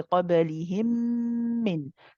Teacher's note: We prolong the gunna here. We say قَبَلِهِمْ مِنْ. So we prolong the joining of the memes. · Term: idgham mutamathilain